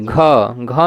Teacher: ह आ रहा है लास्ट में ह आ रहा है घ घ में भी लास्ट में ह आ रहा है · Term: महाप्राण